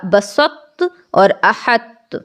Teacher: جا سکتا تھا، لیکن ایسی صورت میں یہ جائز نہیں ہوگا، یہاں ادغام ناقص کیا جائے گا، یعنی یہ جو تو ہے اس کی مہک باقی رہ جائے گی